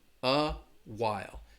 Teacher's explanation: you're going to have that schwa in front of the word.